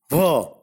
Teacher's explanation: Va is a voiced labiodental fricative.